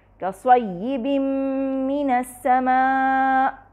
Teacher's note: او کصیب من السماء، یہاں دیکھیے کصیب من السماء، کصیب میں یہاں پہ دیکھیے تنوین ہے، با کے نیچے دو کسرہ ہے یعنی کسرتین ہے، اس کے بعد ہمارے پاس میم آ رہا ہے، یعنی تنوین کے بعد میم آ رہا ہے جو کہ متحرک ہے، چنانچہ تنوین کے نون کا مکمل طور پہ میم میں ادغام ہو گیا ہے